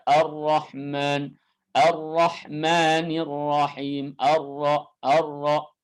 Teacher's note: sifat takrir artinya ujung lidahnya itu bergetar. Nah, sifat takrir yang ada pada huruf ra ini adalah sifat yang harus disamarkan.